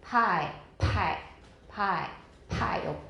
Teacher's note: 可 是 送 气 的 强 度 比 英 文 强 很 多